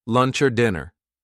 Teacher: do you see how the or now sounds like er